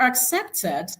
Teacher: the stress syllable is on the second syllable